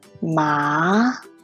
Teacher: the second tone is a rising tone